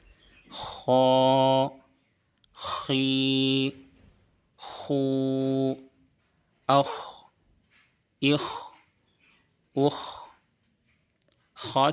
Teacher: ख का मखरज है अदनाए हलक यानी हलक का शुरू वाला हिस्सा जो मुंह की तरफ है खी ख अ इ उख ख की अदायगी के दौरान भी बिल्कुल साफ हवा की तरह आवाज आनी चाहिए। इसमें खड़खड़ाहट की आवाज नहीं आनी चाहिए। · خا کا مخرج ہے ادنائے حلق یعنی حلق کا شروع والا حصہ جو منہ کی طرف ہے۔ · خا کی ادائیگی کے دوران بھی بالکل صاف ہوا کی طرح آواز آنی چاہیے، اس میں کھڑکھڑاہٹ کی آواز نہیں آنی چاہیے۔ بہت سے لوگ جب خا ادا کرتے ہیں تو اخ، اخ اس طریقے سے پڑھتے ہیں، اس سے بچنا ہے۔